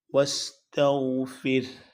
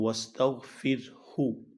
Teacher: را ساکن اور ہا کو ساکن کیا جائے گا جب آپ اس پہ وقف کریں گے۔ واستغفر، اور اگر وقف نہیں کریں گے تو واستغفر ہو۔